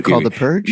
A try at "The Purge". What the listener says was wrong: You put the emphasis on the wrong part. It's called The Purge.